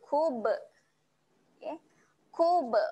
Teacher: huruf ba lagi ba pun sifatnya ada lantun lantun